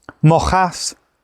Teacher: Mo also causes lenition, so cast becomes chas